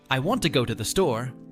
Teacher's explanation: the words want go and store are stressed more than the small words